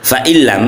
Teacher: ada nun sukun bertemu lam, ada idgham bila gunnah tanpa dengung, langsung dimasukkan